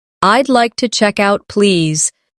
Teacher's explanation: Notice the smooth link between check and out.